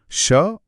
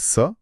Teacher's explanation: जबकि दूसरी ध्वनि दंत्य है। स बोलते समय जीभ दांतों के पिछले हिस्से के करीब आती है